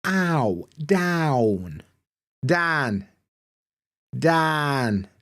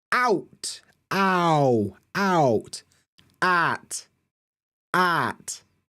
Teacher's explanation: We tend to put monophthongs instead. And what you'll get is that vowels are usually long and flat, like they don't change.